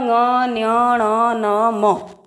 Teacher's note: नाक से आवाज आ रही है, लग ही नहीं रहा है मुंह से बोल रहे हैं। नाक से बोलने के कारण इनको बोला जाता है नासिक्य व्यंजन।